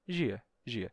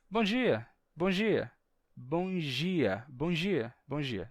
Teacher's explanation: só com o som de J sem fazer o som de D